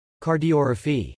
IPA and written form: kɑɹdiɹhəpi (cardiorrhaphy)